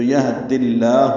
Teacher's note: زیر کی وجہ سے لام اسم جلالہ باریک پڑھا جائے گا